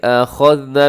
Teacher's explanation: أَخَذْنَا میں خا اپنے موٹا پڑھنا ہے اور آگے ذال کو باریک بھی پڑھنا ہے، اس میں سیٹی بھی نہ ہو۔ أَخَذْنَا، نا کو تھوڑا سا لمبا کیجیے گا، کیونکہ نا کو تھوڑا سا لمبا کیجیے گا کیونکہ اس کے الف ہے نون کے ساتھ، تو آپ نے اس کو لمبا کرنا ہے۔